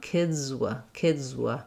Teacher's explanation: I still have kids with a Z, but I have to move right to my w sound. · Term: voiced Z